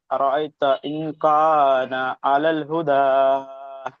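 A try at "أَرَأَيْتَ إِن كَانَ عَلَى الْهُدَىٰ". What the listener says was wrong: এই দালটি কোয়ালি টান দিয়ে পড়তে হবে।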